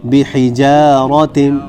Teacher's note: صرف ایک را ہے جو موٹی پڑی جائے گی، باقی کوئی حرف موٹا نہیں پڑا جائے گا